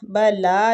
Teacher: بلا لام کو کھینچیں گے، کھڑی زبر ہو رہی ہے